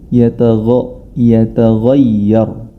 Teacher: Akan tetapi dalam kondisi ini huruf ro yang berharokat sukun dibaca tebal, dan huruf ghain yataghayyar. Huruf ghain merupakan huruf isti'la, huruf yang tebal